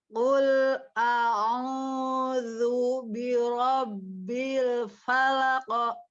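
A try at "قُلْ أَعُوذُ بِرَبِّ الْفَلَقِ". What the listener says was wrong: Falaq. Bukan, jadi bukan falako, itu bukan falako gitu ya. Kalau falako berarti itu harokat, langsung ditabrak saja ya. Falako. Ya, karena dia hanya pantulan saja ya, bukan harokat. Jadi jangan berubah ya bentuk mulutnya ketika dia pantulan pas kita ngucapin huruf qafnya. Falaq, bukan falak.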